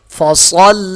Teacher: صاد موٹا ہوگا، لام کے ساتھ سختی سے ملے گا صاد